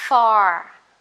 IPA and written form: fɑ: (far)